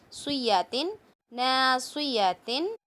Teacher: صاد کو موٹا پڑھنا ہے، سویاتن نہیں کریں گے، یا کو بالکل بھی نہیں کھینچیں گے